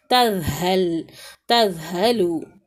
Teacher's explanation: اوپر والے جو دانت ہے اس سے زبان تھوڑی سی باہر آئے گی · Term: ذال